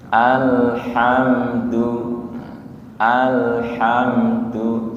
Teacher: alham lamnya tidak mantul nggih bukan qalqalah nggih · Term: tawasud